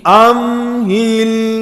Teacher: میم میں بھی لام میں آواز دونوں میں جاری رہے